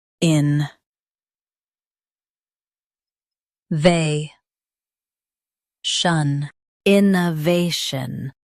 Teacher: Emphasize they and keep shun light and quick.